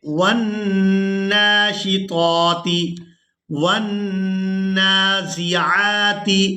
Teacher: یہاں نون مشدد پر غنہ کریں گے، آواز کو کچھ دیر ناک میں چھپا کر رکھیں گے۔